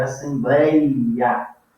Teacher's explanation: um ditongo que eu vou chamar de decrescente, porque eu vou sair da vogal mais alta para a semivogal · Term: ditongo decrescente